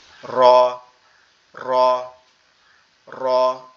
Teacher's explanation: উচ্চারিত হবে একটু ভাইব্রেশন মতো হয়ে